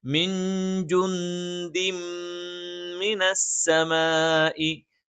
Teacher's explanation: നേരെ ശേഷമുള്ള മീമിലേക്ക് ചേർത്തോതും മണിച്ചുച്ചരിക്കുകയും ചെയ്യും. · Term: ഇദ്ഗാമുൻ ബിഗുന്ന